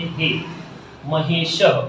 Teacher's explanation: हा और ई जब आपस में मिलेंगे तो जैसा मैंने पहले ही कहा, सामने वाले को कुछ नहीं होगा, म रहेगा, शह रहेगा, लेकिन ये जो हा और ई हैं ये आपस में बदल कर हो जाएंगे हे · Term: संधि